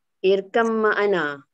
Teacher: Kiranya irkab makna tu sebabkan kita bunyi yang kedua. Jadi bila baca irkab tu terus macam mim. Ada berbunyi mim.